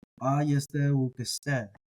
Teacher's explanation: the stress falls on the first syllable ayeste, and then on the last syllable ukeste.